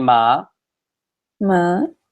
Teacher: notice my tone of voice goes up a little bit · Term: second tone